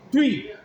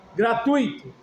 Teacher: O U é vogal. Tu. O I é semivogal